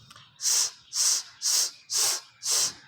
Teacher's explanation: put your finger beside your adam's apple or around your neck you'll feel that there is no vibration while pronouncing s sound